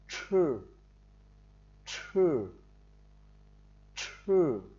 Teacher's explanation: Tiếp theo chữ chờ này chúng ta đọc là giống như chữ chư nhưng nó hơi bật hơi lên một chút